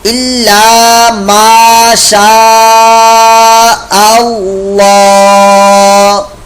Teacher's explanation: الا ما شاء اللہ, اللہ یہ مد متصل ہے, اللہ کا لام پور موٹا یہاں پر ہوگا